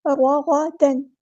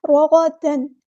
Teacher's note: یہاں پر جو تنوین کی آواز اس کو چھپانا نہیں ہے بلکہ ظاہر کر کے پڑھنا ہے۔ رغدن، اظہار ہو رہا ہے یہاں پہ۔